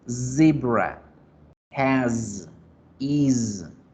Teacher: Otra diferencia del español al inglés, la Z debe vibrar.